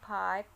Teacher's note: The phoneme P in the word pipe is aspirate to become in allophonic form PH, as it occurs initially. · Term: aspiration